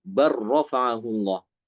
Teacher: Bal rafa'ahullah, bal rafa'ahullah dibaca dengan idgham